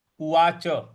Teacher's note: उवाच च के बाद हल्का सा अ भी आना चाहिए, उवाच, क्योंकि यहां पे कोई हलंत नहीं है।